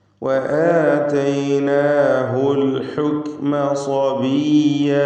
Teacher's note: സ്വബിയ സ്വാദ് തഫ്ഖീം കൊടുത്ത് ഉച്ചരിക്കേണ്ട അക്ഷരമാണ്.